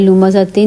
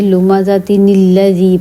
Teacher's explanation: تنوین کے بعد حمزہ وصل ہو تو وہاں ایک نون کے نیچے زیر لگا کر اگلے حرف سے ملاتے ہیں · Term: نون کتنی